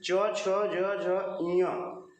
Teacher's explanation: ये सारे के सारे आते हैं तालु के अंतर्गत